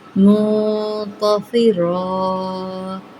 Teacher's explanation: منتصرا، دو زبر کو ایک زبر میں ہم کنورٹ کر دیتے ہیں۔ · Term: مد عارض